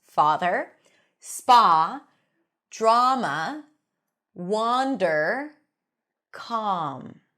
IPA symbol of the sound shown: ɑ